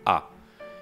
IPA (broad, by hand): a